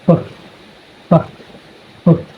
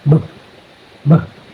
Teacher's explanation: So when you pronounce the letter P, there is no vibration.